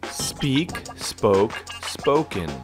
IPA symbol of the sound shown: oʊ